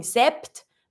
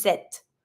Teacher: careful, you're not going to pronounce the P. You're just going to pronounce the T in this one. So you're not going to be saying sept, but just set.